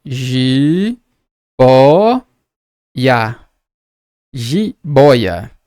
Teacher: ela é uma paroxítona porque a penúltima é a mais forte